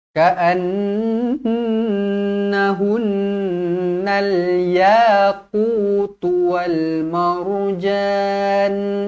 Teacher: Dengung cukupkan betul-betul 2 harokat.